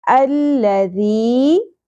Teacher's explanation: ذال نرمی سے ادا ہوگا, سیٹی کی آواز نہیں آنی چاہیے اور شدت بھی نہیں ہونی چاہیے